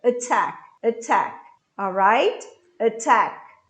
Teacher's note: Esse A é um schwa. O que quer dizer isso? Ele é um som muito breve.